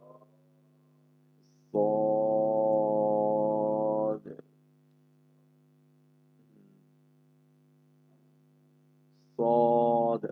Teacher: সদটা শিরশির মোটা আওয়াজে সদ